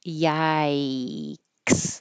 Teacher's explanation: when you finish your tongue is going back up into the High y i position